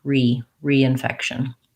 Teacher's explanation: The primary stress is still on the fec, but this RE prefix in this word sounds like a tense E